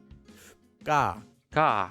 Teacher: The second one is pronounced by slightly tensing your voice before saying the consonant. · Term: double consonant